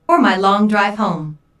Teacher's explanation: notice the emphasis in intonation on home